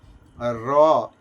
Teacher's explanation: যখন দেখো র উচ্চারণ করছো র এইযে জীবের মধ্যে একটা কম্পন আসছে। শুধু জীবকে না কাঁপিয়ে এক জায়গায় স্থির রেখে বলতো র বলতে পারবে না। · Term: কম্পিত